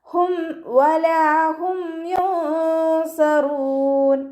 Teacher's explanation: വാവ് ഉച്ചരിക്കുമ്പോൾ ചുണ്ടുകളൊന്ന് വട്ടത്തിൽ പിടിച്ചു കൊടുക്കുക. ലാമിൻ്റെ കൂടെ അലിഫ് മദ് വന്നു 2 കൗണ്ട് നീട്ടിക്കൊടുക്കുക.